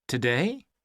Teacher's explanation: The stressed syllable in the word today is day.